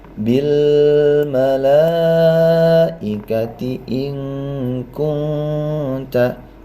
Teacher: Ikhfa adna atau ab'ad menjadi ang.